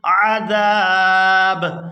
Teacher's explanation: زال کو کھینچتے ہوئے با ساکن کے ساتھ ملائیں گے